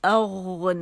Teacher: غین جو ہے ادن الحلق سے ادا ہوتا ہے، زبان کی جڑ کے بالکل پاس